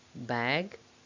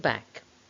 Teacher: the vowel sound is a bit longer before g than before k in middle pairs like bag and back